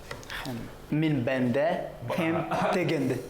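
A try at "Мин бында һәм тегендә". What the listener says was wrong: Вот к чему приводит нарушение норм произношения. Ты сказал бенда, это значит существо. Банда.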